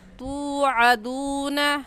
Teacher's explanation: انما توعدون، تا واو پیش تو، واو ساکن سے پہلے پیش آ گیا تو واو مدہ کہلائے گا، اور واو مدہ کو ایک الف کے برابر کھینچ کر پڑھتے ہیں